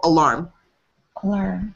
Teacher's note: The emphasis comes on the second syllable, alarm. Alarm. Not alarm, alarm.